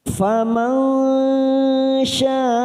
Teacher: Kita berhenti pada tanda waqaf jaiz jim kecil. Faman, nun sukun bertemu shin. Kita samarkan 3 ketuk, siap masuk pada huruf shin, namanya bacaan ikhfa hakiki · ada mat yang bertemu dengan hamzah dalam satu kalimat, mat wajib mutasil, 4 harokat kita panjangkan